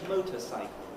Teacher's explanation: Motor is a word, cycle is a word, motorcycle, stressed on the motor.